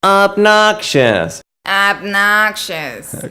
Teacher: talk like this and say the word obnoxious obnoxious good now when you spoke with that thin crabby tone you achieve that tone by raising your larynx